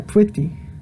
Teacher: It's kind of like a half bilabial trill.